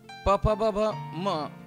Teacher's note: प फ ब भ म हे वर्ण मात्र ओष्ठ्य वर्ण आहेत, कारण ओठांचा एकमेकांना स्पर्श होऊन या वर्णांचा उच्चार होतो.